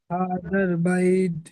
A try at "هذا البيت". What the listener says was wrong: বাইদ লাস্টে দাল হয়ে যাচ্ছে, ওটা দাল হবে না, বাইত তা, বাইত।